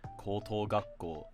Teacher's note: if it's part of a compound such as koto gakko, then it will be pronounced with the drop after the first mora.